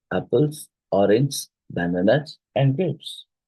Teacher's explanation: peach usually digest slightly with each item to indicate continuation and drops only on the last item to Signal completion · it rises with each item till the last